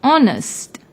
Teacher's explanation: although it starts with H it is silent when we pronounce the word honest